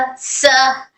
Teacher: س حرف صفیہ ہے سیٹی کی آواز کے ساتھ